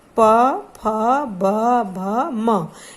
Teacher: इसमें देखिए हमारे दोनों होंठ एक दूसरे को स्पर्श कर रहे हैं। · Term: पवर्ग